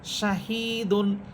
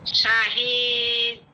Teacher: এখানে দাল হরফ এটা সাকিন হয়ে যাবে, দাল হরফ এটা সাকিন হবে।